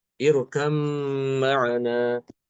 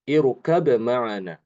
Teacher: Imam Hafiz dia mengidghamkan huruf ba ke mim